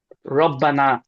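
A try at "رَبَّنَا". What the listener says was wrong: এখানে শেষে লম্বা হবে, রব্বানা।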